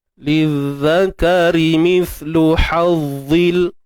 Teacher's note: untuk ra baris bawah kita nipiskan. Ra baris bawah ni kita nipiskan.